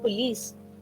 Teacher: their p is not in a stressed position. So in that case, p is unaspirated.